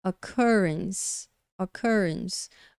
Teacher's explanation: com a segunda sílaba pronunciada mais forte. E a gente consegue ver pela aspa, esse símbolozinho mostra que essa sílaba aqui, olha, a segunda sílaba da palavra é pronunciada mais forte.